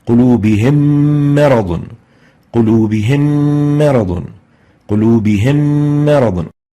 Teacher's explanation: the ghunnah has been exaggerated due to the merger of the two Meems together, and that's reflected by a shadda on the second Meem and giving the second Meem the color green. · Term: idgham with ghunnah